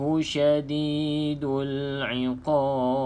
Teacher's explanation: pastikan kalau kita berhenti pada ba ni dia akan jadi sukun kan, dia akan jadi mati, maka kena jelaskan bunyi qalqalah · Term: qalqalah kubra